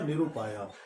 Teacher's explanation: विसर्ग र बन गया। और इस र में ये उ मात्रा बनकर मिल गया तो रू हो गया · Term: रत्व संधि